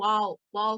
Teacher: जब हम वाव को अदा करते हैं तो होंठों को कोशिश करते हैं कि आपस में मिलने ना पाए, जैसे हम इंग्लिश में वाव वाव कहते हैं, इसी तरह से इसको अदा करते हैं।